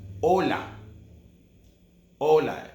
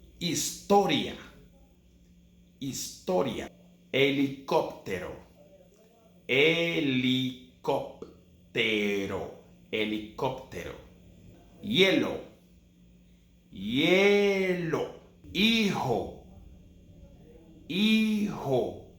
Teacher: the letter H in Spanish is voiceless. It's completely voiceless. It never sounds.